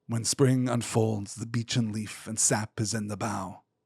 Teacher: presented as a dialogue between the ant and the antwife in this rolling amic heptter. That's seven metrical feet, seven pairs of unstressed and stressed syllables in each line